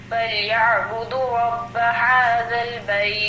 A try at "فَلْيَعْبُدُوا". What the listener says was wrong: فلیعبدو میں واو مدہ کھینچو. فلیعبدوا رب هذا البیت.